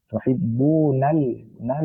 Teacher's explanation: Lam merupakan huruf bainiah yaitu di antara berarti dia bukan khawah dan juga bukan syiddah tuhibbu nal nal di tengah-tengah.